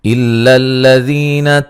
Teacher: حمزہ کو لام سے سختی سے ملائیں گے